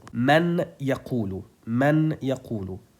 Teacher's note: we should erase the sound of Noon, but not its Ghunnah. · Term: Idgham with Ghunnah